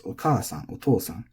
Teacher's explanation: These are very intuitive for English speakers because the accent, the pitch, is lining up with the long syllable